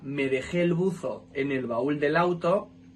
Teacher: pronunciando ese buzo con ese en vez de con z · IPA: /s/